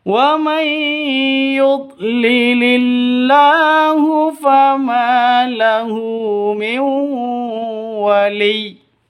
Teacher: Cara bacanya masuk ke ya disertai dengung dua ketukan. Karena ini hukum bacaan idgham bi gunnah.